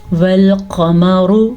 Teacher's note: را کو لمبا تو نہیں کرنا لیکن را کو موٹا ضرور کرنا ہے کیونکہ را کے اوپر پیش ہے.